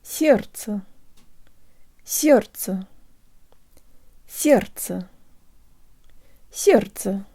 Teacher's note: The d in this word disappears into the ц, which makes the second syllable super easy, and the second y sounds like a schwa.